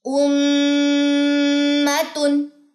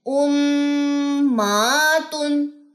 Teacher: میم کی زبر لمبی نہیں کرنی